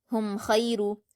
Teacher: तो इसलिए यहां मीम साकिन में भी इजहार शफी का कायदा होगा। मीम साकिन की आवाज को जाहिर करके पढ़ेंगे। हुम ख पर यालीन है तो इसको हम मारूफ पढ़ेंगे और ख को पुर पढ़ेंगे।